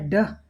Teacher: ड वॉयस्ड है, इसमें संघोष, संघोष मतलब कंपन होता है स्वर तंत्र में, जिसको स्वर तंत्र, स्वर बीड़ा ये सब कहते हैं।